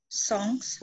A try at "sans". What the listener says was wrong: Alors, le S final, you don't pronounce the final S in that case. Sans.